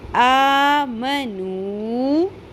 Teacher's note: لَقُلْ لَذِي نون زبرنا, لَقُلْ لَذِينَ حمزہ کھڑی زبر آ, میم زبر ما, آم, نون پیش واو نو, مد اصلی ہے, پیش کے ساتھ واو ساکن آ گیا, اس کو شارٹ نہیں کرنا, ایک الف کے برابر لمبا کرنا